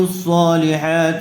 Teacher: آمنوا وعملوا الصالحات، صاد کو پر کیجیے، صالحات، تا کے نیچے زیر ہے، تا کو جلدی پڑھیں گے، کھینچیں گے نہیں